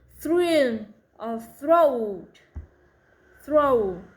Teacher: the R is the strongest sound of the blend and the louder than the TH. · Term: THR blends